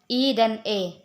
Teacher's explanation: berdasarkan bentuk bibir terbagi menjadi 3 yaitu vokal tidak bulat bibir tidak bulat dan terbentang terbentang lebar